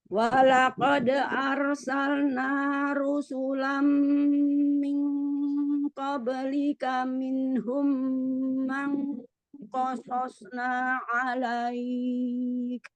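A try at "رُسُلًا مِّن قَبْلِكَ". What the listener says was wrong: Masih ming ya. Miu. dengungnya tebel. Enggak, jadi pas dengungnya tebel. Jadi jangan miu kok. Nah, jangan, tapi miu.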